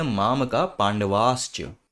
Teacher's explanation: हो जाएगा श और इसीलिए बोलते हैं माम का पांडवा श्च तो विसर्ग के सामने च आने से वो श हो जा रहा है